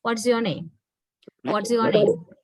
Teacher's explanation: my voice level goes down. That is falling intonation.